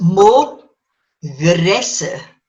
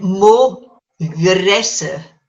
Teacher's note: Right. So then your D lenited becomes DH, but it sounds like G. It sounds like a soft G.